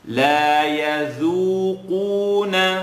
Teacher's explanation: So the dal is light and the qaf is heavy.